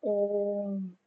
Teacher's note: जैसे हम जब ओम का उच्चारण करते हैं तो जो बीच में मात्रा होती है ओम तो वो लंबी खींच जाती है। वो तीन मात्राओं जितना लंबा समय उसको उच्चारण करने में लगता है। इसीलिए हम इन्हें त्रिमात्रिक स्वर भी कहते हैं।